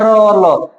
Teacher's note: र और ल दंत मूल या वर्त से बोला जाता है।